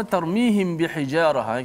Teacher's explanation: kita baca secara Ikhfa Syafawi itu kita kena panjangkan kadar dengung